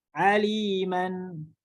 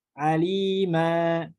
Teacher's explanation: nunnya ya diganti menjadi huruf alif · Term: mad iwad